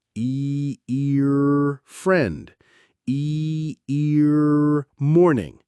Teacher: The American R is a bunched sound, made with the tongue pulled back.